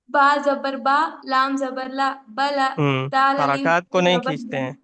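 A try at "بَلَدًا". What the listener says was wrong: حرکات کو نہیں کھینچتے ہیں حرکات کو نہیں کھینچتے ہیں ٹھیک ہے حرکات کیا ہے زبر زیر پیش کو حرکات بولتے ہیں اسے نہیں کھینچتے ہیں امید ہے کہ آپ پچھلی تمام کلاسز دیکھیں گے اس کے بعد کلاس اٹینڈ کریں گے اگلی نہیں تو سمجھ میں نہیں آئے گا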